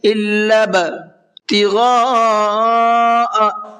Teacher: إِلَّا ابْتِغَاءَ یہاں پر یہ بڑا مد بنا ہوا ہے، اس بڑے مد کو 4 سے 5 الف کی برابر کھینچ کر کے پڑھنا ہے